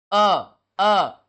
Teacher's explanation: जीभ की जो आगे और पीछे वाला भाग शांत रहेगा और बीच वाला भाग हल्का सा उठेगा